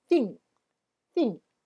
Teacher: 你要把你的舌头放在牙齿的中间吹气